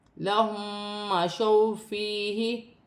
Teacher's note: میم ساکن کے بعد میم مشدد آ رہی ہے، ادغام مال غنہ کا قاعدہ ہے، غنہ کیا جائے گا۔ · واو ساکن سے پہلے زبر ہے تو واولین بنے گی، اسے کھینچا نہیں جائے گا۔ یا ساکن سے پہلے زیر ہے، یا مدہ بن رہی ہے، اسے ایک الف کی مقدار کھینچ کر پڑھا جائے گا۔